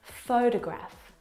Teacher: the first syllable is the stressed syllable you can hear it very clearly